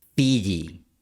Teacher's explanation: la lengua está en una posición similar a la I, pero sube un poco más y esto deja menos espacio para el paso del aire. El aire pasa produciendo fricción, como cuando pasas papel lija sobre madera. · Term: consonante fricativa